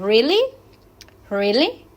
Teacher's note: realmente le damos entonación ascendente